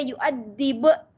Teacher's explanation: Ada qalqalah pada huruf ba yang akhir sebab dia berbaris ya. Qalqalah kubra.